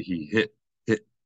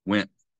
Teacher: say went and it's not that we don't pronounce the T we pronounce it but we pronounce it as a sound that is not actually a t we're pronouncing it as a glottal stop that's the correct sound but that's only when there's a vowel